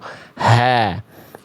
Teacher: Ha itu ha dari tenggorokan pangkal itu